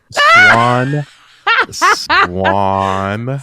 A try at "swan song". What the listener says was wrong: Swan song. said swank. You said swank